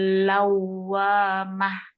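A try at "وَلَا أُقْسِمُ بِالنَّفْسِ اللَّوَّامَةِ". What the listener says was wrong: Oke, ini wa-nya masih belum. Coba baca. Awa. Nah, harus sampai itu bibirnya.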